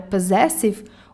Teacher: Na palavra possessive, os dois S's têm som de Z e depois de S.